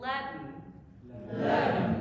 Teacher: it's a plosive that doesn't plose. So it builds up and then you have to redirect it through the nasal cavity as an N. Try it. You might even feel a bit of articulation happening, almost like a glottal, something like that, except it's not in the throat, it's the air redirecting them up through the soft palate.